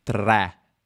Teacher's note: al nord d'italia al nord è comune dire 3 è con una è aperta